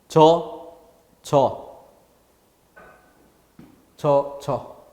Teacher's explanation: 지읒은 지읒 자체 소리 성질이 커서 어와 여가 구별될 수 있게 해주지 못한다는 거죠